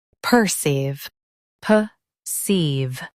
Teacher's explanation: Emphasize ceive and keep per soft.